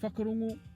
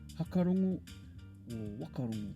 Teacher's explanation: typical of a lot of iwi around the country, pronouncing the WH as f